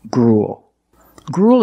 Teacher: we see the U-E-L making the long oo sound, followed by a dark L, just like in the words pool and cool.